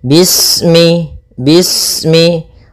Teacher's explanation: Pada bacaan bis ini, sempurnakan huruf sinnya. Ketika sinnya sukun, ini ada sifat saofir. Dia harus kita alirkan nafasnya. Bis. Nah, seperti itu sempurna baru baca mi.